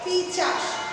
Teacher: উচ্চারণের দ্রুততার ফলে এই ধরনের ধ্বনির স্থান পরিবর্তন হয়, একে বলা হবে ধ্বনির বিপর্যয়।